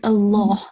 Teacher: And this Allah, because the previous letter has a fatha stroke, it will be thick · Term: thick lam